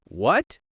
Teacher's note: When you're annoyed and say, What? with a sharp drop, that's similar to the fourth tone.